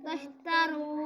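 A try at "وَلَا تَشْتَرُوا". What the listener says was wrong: لا الف مدہ ہے لمبا کر کے پڑھیں گے, رو واو مدہ ہے لمبا کر کے پڑھیں گے.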